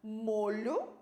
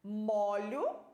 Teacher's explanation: Então essa diferença também na pronúncia da palavra molho é um som fechado no o molho é um som aberto é no ó